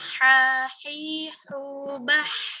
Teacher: Kemudian huruf H, tengah tenggorokan.